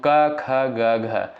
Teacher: तो क ख ग घ, तो इसका उच्चारण जो होता है साथियों कंठ होता है, ठीक है, यानी क वर्ग का उच्चारण होता है आपका कंठ से